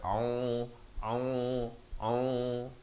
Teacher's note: Ain di pertengahan kerongkong beri dhammah dua harakat